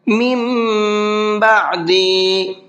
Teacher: یعقوب الموت اذ قال لبنیہ ما تعبدون من بعدی، من بعدی، یہاں پر دیکھیے نون ساکن کے بعد میں با ہے اور نون ساکن کے بعد میں با آتا ہے تو وہاں پر ایک چھوٹا سا میم بنا ہوا ہوتا ہے، مطلب یہ ہے کہ اب یہاں پر یہ نون نہیں پڑھا جائے گا بلکہ یہ چھوٹا والا میم پڑھا جائے گا